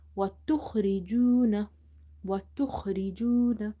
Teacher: Kha is heavy, okay, and it's from the upper part of the throat.